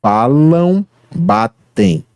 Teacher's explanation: grande parte do ar passa pelo nariz ao longo da pronúncia da palavra, por isso que é nasal, dígrafo nasal, ditongo nasal.